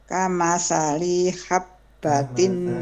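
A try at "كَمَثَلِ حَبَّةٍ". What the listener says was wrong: kesalahannya bukan di habbatin tapi di li-nya. Kamathali habbatin, li-nya jangan dipanjangkan.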